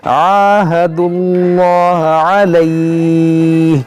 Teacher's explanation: आहदु, ये दाल को लाम से मिलाएंगे